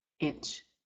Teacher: the N comes before CH, and you're nasalizing the I. Inch. I comes before CH, using the N for nasal, but you don't pronounce the N.